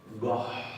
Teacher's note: Se produce una aspiración antes de la doble T.